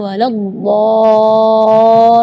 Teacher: Mad di situ kita harus panjang membacanya 6 harakat, karena di situ hukumnya mad lazim kalimi mutsaqqal.